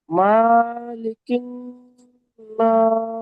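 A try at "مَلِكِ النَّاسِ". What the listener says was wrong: টান হয়ে যাচ্ছে, মালিকিন নাস করতে হবে। নাস টান দিতে হবে। ইলাহিন নাস।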